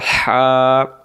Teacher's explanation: তাহলে লম্বা হাটা আমরা কেমন করে পড়ছিলাম, শোষো করে। লম্বা হা হলকের মধ্য থেকে শোষো করে পড়তে হয়